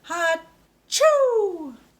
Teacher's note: So that has that ch sound in the middle. Make sure your tongue is behind your teeth.